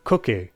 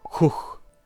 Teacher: they recreated one by softening /k/ to /x/ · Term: soft k